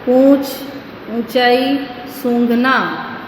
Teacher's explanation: इनका उच्चारण मुख और नासिका दोनों से होने के कारण अनुनासिक की ध्वनि निकलती है · एक अलग ध्वनि निकलती है जो नाक और मुंह से निकलती है